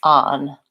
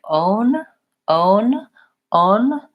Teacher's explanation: I use an AA on so I don't use that pronunciation I use the AA vowel in the word on